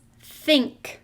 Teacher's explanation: i hear that n k blend at the end with a short i sound